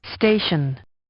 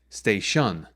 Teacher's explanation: the first syllable the stay that's the syllable that's stressed more than the second syllable · that stress on the first syllable helps to create its natural shape